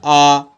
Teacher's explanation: इसमें खुला मुख रहता है पूरा मुख खुला रहता है और यह होता है आ आप बड़ा बोल के देखिए देखिए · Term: विवृत स्वर